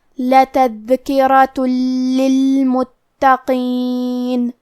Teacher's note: کلمت للمتقین میں تا پہ تشدید ہے، لہذا ہمیں 2 حرف کے برابر تا کو پڑھنا ہے · لام حروف الادغام بغیر غنہ میں سے ہے اور ادغام کا معنی ہے حرف کو حرف میں داخل کرنا، تو ہم یہ تنوین کو لام میں ملا کے بغیر غنہ سے لیکن تشدید کے ساتھ یہ حکم کو ادا کریں گے